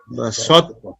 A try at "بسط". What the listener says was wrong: تا کو باریک رکھیں.